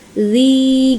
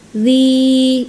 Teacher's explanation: Karena dia ada kasrah pada huruf dalal itu barisnya kan ada kasrah bertemu dengan ya sukun. Jadi panjangnya dua harakat dzi gitu. Dua harakat itu dua ketukan ya teman-teman. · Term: mad thobi'i